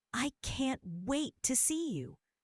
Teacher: Stress on can't wait.